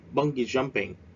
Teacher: And bodyboarding we spread at the first syllable. Chúng ta nhấn âm đầu tiên nha